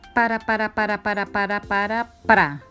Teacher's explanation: el fonema r tiene punto de articulación alveolar es decir se produce cuando la punta de la lengua se sitúa en los alveolos es decir una parte situada justo encima de los dientes ahora